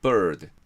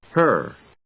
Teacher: R▁が1音節分、1シラブル分、1拍分になるわけです。 つまり▁R▁が母音みたいな役割をしているということです。でも音はあくまで子音です。音はあくまで▁right▁とかのと同じ音です。それをちょっと長めに発音するだけ。bird。じゃあ発音練習してみましょう。bird。もう一ついきましょう。彼女の▁her。これも同じです。right▁のと同じ音。母音がないんです。her。つまりこの記号を見たら▁R▁と同じです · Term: 音節主音の子音